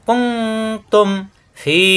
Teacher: মিম সাকিনের পরে বা আর মিম সাকিনের পরে মিম থাকলে গুন্না হয়, এখানে গুন্না হবে না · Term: মিম সাকিনের ইজহার